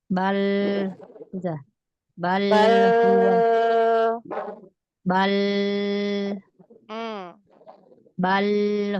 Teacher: Bal lamnya jangan ditarik mi bal jangan tebal.